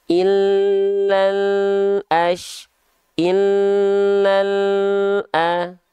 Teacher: Jadi ketika dilafalkan L-nya terus jalan tanpa memantul tapi harus ngalir, jangan putus. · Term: tawasud